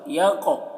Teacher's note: قاف میں قلقلہ بھی کرتے ہیں اور موٹا کر کے بھی پڑھتے ہیں